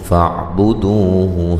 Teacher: فاعبدوہ جب وقف کریں گے ہا ساکن ہو جائے گی، بڑی مد کے ساتھ وقف کر سکتے ہیں، دو و مدہ ہے۔